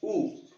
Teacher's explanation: ऊ में फिर जीभ पीछे की तरफ चली गई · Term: पश्च स्वर